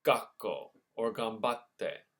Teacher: The sokuon creates a double consonant, like in gakko or gambatte. Remember that double consonant is a glottal stop.